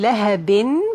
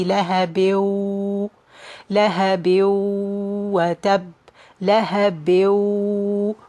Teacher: the tanween is going to be merged into the waw. Instead of saying lahabin, pronouncing noon, it's going to be merged into the waw.